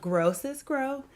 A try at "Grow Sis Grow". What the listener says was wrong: say that again. You said that kind of fast.